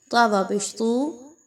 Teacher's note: واو مدہ ہے، 1 سے 2 الف کے برابر اس کی ادائیگی رکھیے